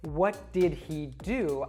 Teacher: pronouns that begin with an h like he his or her we will often drop that h sound and connect it to the preceding word